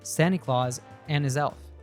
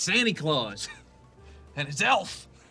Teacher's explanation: combination loses the T so it sounds like San not Santi the D is dropped in and while the H sound is dropped in his so they link together and we hear an is · the Z sound from his gets linked to the next word, and his self. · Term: connected speech